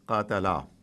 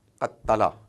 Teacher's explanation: So there is a stop like jazm and then push forward ta, qattala. So this is because there are two ta that have come together and they're not written together. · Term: tashdid